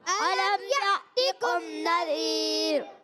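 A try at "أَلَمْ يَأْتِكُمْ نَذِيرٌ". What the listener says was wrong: را باریک کریں گے پیارے بچوں, را پر نہیں ہونا چاہیے. الم یأتکم نذیر.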